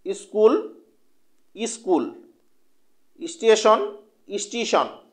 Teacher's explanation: শব্দের আদিতে সংযুক্ত ব্যঞ্জন থাকলে সেই সংযুক্ত ব্যঞ্জনের উচ্চারণ সৌন্দর্যের জন্য তার আগে একটা স্বরধ্বনির আগমন ঘটে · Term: আদি স্বরাগম